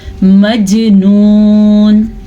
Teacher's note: جیم کے اوپر کلکلا ہو رہا ہے. کلکلا کہتے ہیں جھٹکے کو.